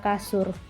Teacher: Yang pertama dilafalkan sebagai bunyi U apabila berada pada silabel terbuka, seperti pada kata susu. Yang kedua direalisasikan sebagai bunyi U besar apabila berada pada silabel tertutup